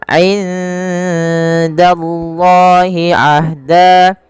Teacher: nun mati bertemu dengan dal, samarkan nunnya kepada huruf dal karena ia ada bacaan ikhfa yang dimana suara nunnya samarkan kepada huruf dal.